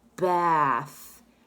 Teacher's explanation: it's a th sound without making a noise with your voice. You just make the noise with your breath through your teeth.